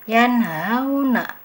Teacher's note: nun mati bertemu dengan huruf idhar halki yaitu ha. Jadi tanpa ada dengungan sama sekali. Jangan membacanya yan.